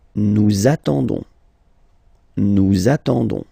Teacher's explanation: Okay, but then nous is coming here, all right, and then we've got the classic ending for nous, so O-N-S, okay, you don't pronounce the S, so you get only this on sound